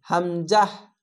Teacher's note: এটিকেও হামজা পড়তে হয়। তা হামজা কোন টান নেই। আর মুখটা খোলা থাকবে।